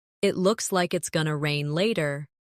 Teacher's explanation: It looks like it's going to rain later. In connected speech, going to becomes gonna.